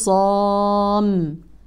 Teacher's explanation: الخاء والصاد حروف مفخمه والالف كذلك طبعا للصواب سيكون مفخخه الخصام ويشهد الله على ما في قلبه